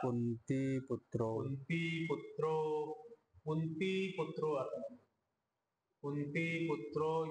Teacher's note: इकार छोटा केला आपण करायचा नाही इकार मोठा करायचा